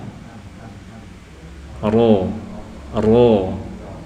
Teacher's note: Ya, mungkin bisa diamati itu perbedaan dari nun dan ro ya. Bagian lidah yang menyentuh nun itu pas di ujungnya ya. Adapun ro sedikit mundur ya dari nun. Nah, jadi tidak pas pada ujung yang runcing ya. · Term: huruf ro